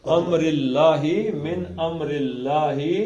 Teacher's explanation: اللہ کے پیچھے زیر ہے لہذا اللہ کا لام پتلا پڑا جائے گا